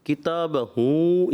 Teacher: کتاب ہو پہ آپ نے کتاب ہوں یعنی ناک کی طرف لے گئے آپ